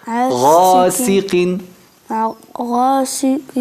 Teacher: La punta de la lengua con los dientes interiores con silbado.